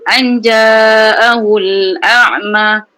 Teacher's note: Baca cenderung kepada jim. Suara kita dah cenderung kepada makhraj jim.